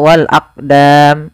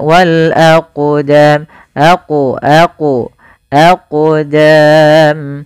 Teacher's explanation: Maka ketika ada huruf qaf atau yang semisalnya, yaitu huruf qalqalah, maka cara membacanya yaitu kita memantulkan huruf qafnya, yaitu kita pantulkan